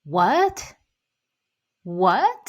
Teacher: What? Second tone. What? Go up.